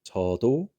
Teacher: So this, again, chiat at the beginning, soft ch, pretty simple, nothing too crazy beyond that. This is in the middle after a vowel, so it is going to be the D sound.